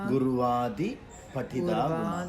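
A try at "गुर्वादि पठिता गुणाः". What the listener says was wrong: Gurvadi. The D here is terrible. Patita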